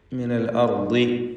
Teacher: ദ്വാദിന് കസ്റായതുകൊണ്ട് കുറഞ്ഞ തഫ്ഖീമാണ് വരിക